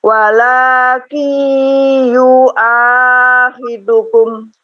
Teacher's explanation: Yu-nya tidak dipanjangkan, tapi ketika nun sukun masuk ke ya, walakin yu-nya pendek. Walakin ya itu yang dipanjangkan.